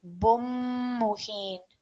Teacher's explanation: no tanveen should be heard there, just a bit of a nasal sound. · when you're joining with a mim mushaddad, you're not going to hear the tanveen. So it'll be bum muhin.